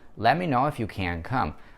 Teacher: Выделяем мы и глагол can, и сам смысловой глагол.